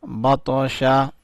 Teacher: تو کے اوپر کلکلہ کیا یعنی تو کو اٹھایا